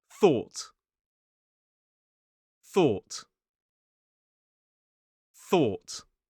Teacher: Voiceless th or sound with an unaspirated t on the end, so it's thought.